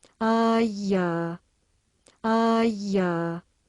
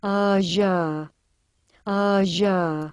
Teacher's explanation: Phonetically there’s a continuum between the non-sibilant palatal place of articulation, aja, aja, and the further forward positions, alveolo-palatal and postalveolar like English ʒ as in measure, aʒa, aʒa, from which a narrow jet of air can be fired at the back of the teeth.